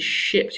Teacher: sh and j are actually produced with rounded lips in RP, creating oo resonance, making it quite different from Dutch sh and j.